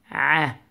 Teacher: Pronounce the عين from the middle of your throat.